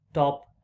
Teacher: In the word top, the t comes with a puff of air, which is t. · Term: aspirated t